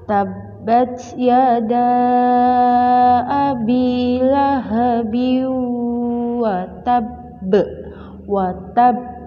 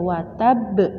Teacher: Qalqalah kubra. Tapi membacanya lebih berat, lebih dipantulkan, lebih ditekan karena terdapat syiddah.